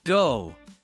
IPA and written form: ɡəʊ (go)